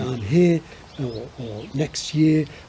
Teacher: totally monophthonged vowels in those two words but not in the rest of their vocabulary